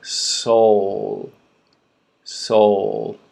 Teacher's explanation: Look at my lips rounding, right? O. Tongue is going up for that L sound.